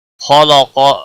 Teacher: خلق خا حروف مستعلیہ میں سے پر پڑا جائے گا، قاف بھی حروف مستعلیہ میں سے پر پڑا جائے گا.